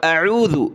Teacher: حمزہ کی آواز پھر عین کی آواز آنی چاہیے، ذال پر زبان نکالیں گے